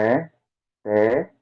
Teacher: A gente tem que pronunciar esse Chevá, tem que pronunciar aqui como sendo a vogal E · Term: Chevá vocálico